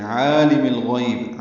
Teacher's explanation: عالم الغیب عین وسط حلق سے ادا کریں گے